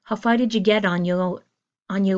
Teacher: You don't hear a strong T on get. You hear a held in get.